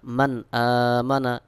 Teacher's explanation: নুন সাকিনের পরে আমজা ইজহার হবে অর্থাৎ গুন্না ছাড়া স্পষ্ট করে পড়তে হবে